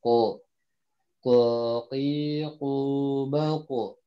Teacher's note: Huruf qaf adalah makrojnya ujung lidah, apa pangkal lidah bertemu dengan langit-langit belakang. Dan dia agak tebal karena lidahnya sebagian besar lidahnya naik.